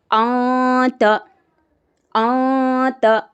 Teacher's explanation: نون کی آواز کو ناک میں چھپا کے پڑھیں گے